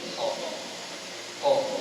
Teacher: dia hanya tebalkan saja, tapi makhraj dia itu masih dia gunakan makhraj huruf ta